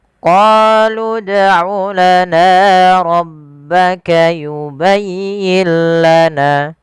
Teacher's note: apabila ada huruf dal berharokat sukun, maka kita baca dengan bacaan qalqalah, harus memantul. Qalqalah artinya memantul.